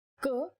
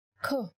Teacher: In Hindi, when you say k, there is no forceful expulsion of air. But when you say kh, you will feel yourself expelling the air from your mouth.